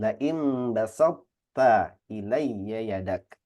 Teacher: Jadi huruf to-nya itu masih menyisakan basatta, masih ada tebalnya. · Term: idgham naqis